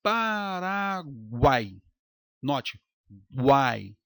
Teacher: U e o I são semivogais. E o A, ele é a vogal, está no centro. E aí nós temos um tritongo.